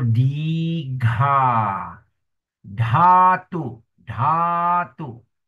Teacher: Pronounce with H sound immediately following. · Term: aspirated consonant